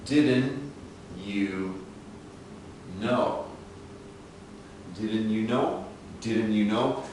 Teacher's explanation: the speaker is dropping this T sound